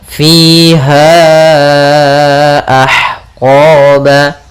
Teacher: Panjangnya untuk mad jaiz munfasil yaitu 4 harakat.